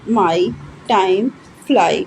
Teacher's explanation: अब हमारी टंग क्या हो रही है, एक साउंड से दूसरे साउंड की तरफ पोजीशन चेंज कर रही है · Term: डिफ्थोंग्स